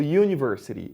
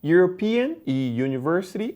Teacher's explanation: esse University aqui ele vai ter o som de uma semivogal